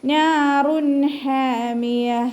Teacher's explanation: ഇവിടെ നൂനിൻ്റെ കൂടെ മദ് വന്നിട്ടുണ്ട്, അലിഫ് മദ്. അപ്പോൾ 2 കൗണ്ട് നീട്ടി കൊടുക്കുക. പിന്നെ തെൻവീനിന് ശേഷം ഹ ആണ് വന്നിട്ടുള്ളത്. · അപ്പോൾ നമ്മൾ ഇൽഹാർ ചെയ്യാണ് കേട്ടോ. ഇൽഹാറിൻ്റെ അക്ഷരമായ ഹ വന്നതുകൊണ്ട് തെൻവീനിനുള്ള നൂനിൻ്റെ സൗണ്ടിനെ നമ്മൾ വ്യക്തമാക്കിയിട്ട് ഉച്ചരിക്കുക